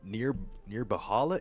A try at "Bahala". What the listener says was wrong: The H is silent.